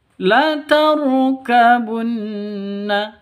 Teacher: Roknya rok tafkhim, rok tebal, harus ditebalkan